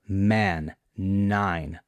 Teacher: the M and N sound, for example, man, nine, always voiced